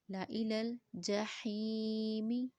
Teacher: اب لا کو جلدی سے پڑھیں گے کیونکہ زائد الف ہے